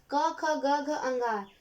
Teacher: ये सभी कंठ मतलब गले का जो भाग होता है, यहाँ से प्राण वायु स्पर्श करती हुई बाहर निकलती है